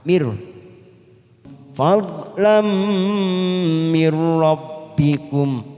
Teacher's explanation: nun sukun bertemu ro yang bertasdid, namanya idgham bila gunnah, hanya masuk tanpa mendengung, tanpa ditekan lama-lama.